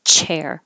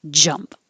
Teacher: So here in the same position where it's made, ch and j, the whole tongue is stopping the airflow. The first one is voiceless, chair, and the second one has voicing, jump.